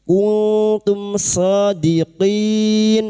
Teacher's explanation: Mim Sukun bertemu dengan ikan shad. Mim sukun dibaca dengan jelas tanpa nasalisasi. Izhar Syafawi. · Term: idhar syafawi